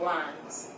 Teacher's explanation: A little bit glottal. Like a fat L.